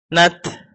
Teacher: Tetap makhrajnya ta, ujung lidah digusi, tapi ada sedikit udara yang keluar setelah matinya begitu.